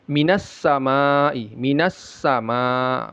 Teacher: tidak dibaca bin tapi bim masuk dia ke mimnya ya lebur ya lebur dia ke mimnya dan ada ghunahnya minasamaai minasama Ma ma panjangnya ini wajib empat atau lima harakat. · Ma ma panjangnya ini wajib empat atau lima harakat. Mad wajib muttasil ya. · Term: idgham bighunah